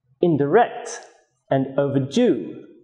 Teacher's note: indirect and overdue are some examples they are stressed on the third syllable